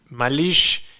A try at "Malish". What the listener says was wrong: Es Malish, no Malix. Malish